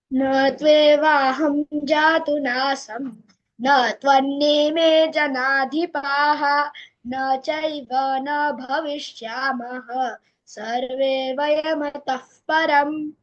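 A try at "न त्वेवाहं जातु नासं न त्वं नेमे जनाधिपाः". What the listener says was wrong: so dvitvas are there which you have missed. Natve, it's not natve. Natve, na is having a pressure. Natve vaham, then jatunasam, then natvam, so na is having a pressure. So say with the dvitvas. If you're doing anuswara, you should do it correctly. Otherwise, say ma.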